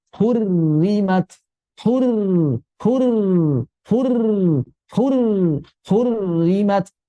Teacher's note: Ketika sudah ada tasdid maka sudah jadi idgham. Maka ro pertama sudah masuk makhraj dan sifatnya ke ro kedua. · Kalau ro ini kasrah maka dibaca tipis. Maka hurrim kasrah berarti dia dibaca tipis karena sudah terjadi idgham. Kan aslinya dua ro ya.